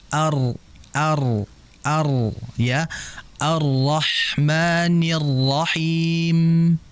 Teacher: Mengapa tidak jelas getaran? Karena ujung lidahnya itu tidak ee menempel pada atau tidak nyentuh ke langit-langit. Langit-langit atas ini dalam ilmu tajwid namanya adalah alhanakl a'la.